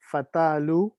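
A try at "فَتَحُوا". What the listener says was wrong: آپ لام کیوں لا رہے ہیں؟ فتح جی فتح وہ کہاں سے لا رہے ہیں؟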